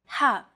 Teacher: The letter ha is pronounced deep in the throat. Ha. This sound is pronounced very deep in the throat.